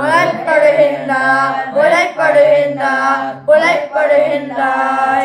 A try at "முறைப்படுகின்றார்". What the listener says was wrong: जोर जोर से नहीं बोलना है, एक ही श्रुति में बोलना है ना।